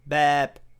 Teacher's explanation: la consonne finale c'est le B aussi, mais il est prononcé P